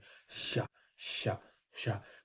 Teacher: गर्माहट मू अब क्या है गर्म हवा इसलिए निकलती है क्योंकि इसमें जो ध्वनि है ना ये संघर्ष करती है निकलने के लिए जीभ के माध्यम से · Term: संघर्ष व्यंजन